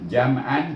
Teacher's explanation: Mim ini adalah huruf izhar syafawi, hukumnya mim mati, hukum mim mati izhar syafawi. Jadi bunyi jam terus tutup bibir, buka balik semula.